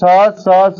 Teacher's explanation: स स स वाले क्या हो गए महाप्राण अघोष हो गए